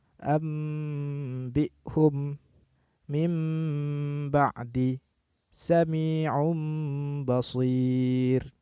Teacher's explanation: menggantikan pengucapan nun sukun atau tanwin ketika bertemu dengan huruf ba menjadi mim sukun hurufnya hanya satu yakni hurufba contoh daripada pembacaan hukum iqlab ini